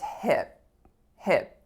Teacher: I don't have to say hip and throw the air of the P onto you